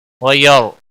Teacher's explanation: لنا وَلَكُمْ وَيَرْحَمُنَا اللَّهُ إِيَّانَا وَإِيَّاكُمْ وَيَرْ را کو پر پڑھیں گے، را ساکن سے پہلے زبر ہے اس لیے را کو موٹا پڑھیں گے